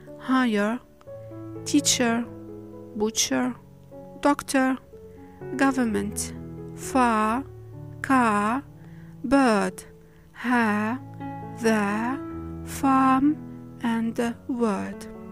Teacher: I dropped the R of the end of the words. When it is preceded by a vowel. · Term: non-rhotic R